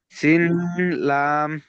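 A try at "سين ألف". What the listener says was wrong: জি, না ওটাকে পড়বেন আলিফ, শেষে এসছে আলিফ। সিন আলিফ, এটা আলিফ পড়বেন, ঠিক আছে।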